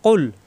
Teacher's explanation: কলকলা হলে তখন ধাক্কা দিয়ে পড়তে হবে, লাম এলবে কফের সাথে লক্ক, ধাক্কা হবে। কুল জিব্বার গোড়া থেকে কুল